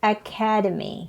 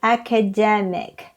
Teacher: The noun form is academy, second syllable, and the adjective is academic, third syllable.